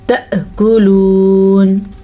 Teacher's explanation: حمزہ کے اوپر ساکن آنے کی وجہ سے جھٹکے کی کیفیت پیدا ہوگی، تو اسے ہم پڑھیں گے تأکلون.